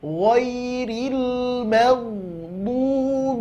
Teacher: Ghairil maghdubi, bo, belajar huruf bo, ya, makhrajnya adalah hafatul lisan ma'al adras, tepi lidah bahagian pangkal bagian belakang tempelkan ke gigi geraham atas, baik kiri maupun kanan